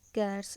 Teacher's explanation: In cats, it will not pronounce as Z, but it is S.